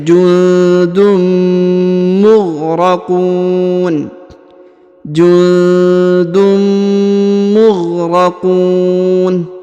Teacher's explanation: Kemudian huruf mim lagi bertemu tanwin bertemu dengan mim ya. Bertemu dengan mim maka didengungkan, lalu kemudian dileburkan huruf tanwinnya atau tanda tanwinnya ke huruf mim ya, lalu berubah menjadi menyebut huruf mim.